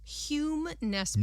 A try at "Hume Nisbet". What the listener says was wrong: Nope. Hume Nisbet. Nisbet. It's N-I, not N-E. I keep trying to make him Nesbit, and he's Nisbet. Nisbet. Hume Nisbet.